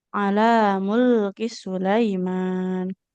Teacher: Huruf sin nggak bertasjid, jadi jangan ala mulkis